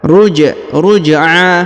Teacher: Huruf ja berharokat sukun, maka dipantulkan atau dikolkolahkan.